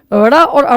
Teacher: इनका उच्चारण करते समय जीभ झटके के साथ नीचे आती है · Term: उत्क्षिप्त व्यंजन